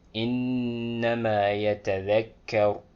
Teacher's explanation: In that case, you pronounce a clear noon and then you extend it for 2 counts